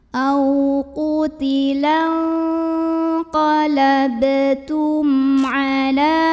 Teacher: Berikutnya ada hukum izhar syafawi karena mim sukunnya menghadapi huruf selain mim dan ba yaitu huruf ain, maka mim sukun dibaca izhar atau jelas, bunyi M-nya jelas